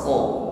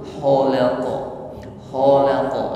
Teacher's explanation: ada gesekan di akar lidah dan tenggorokan, dinding tenggorokan. Kho dan juga sifatnya istiqla ya, jadi bunyinya tebal, kho, jangan lembut.